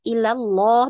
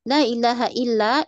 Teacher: illallah bagus tebal tetapi lailahanya lailahailla itu tipis